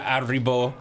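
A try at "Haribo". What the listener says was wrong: Arribo. You said it like it's a French word. You know, I love candy like Arribo.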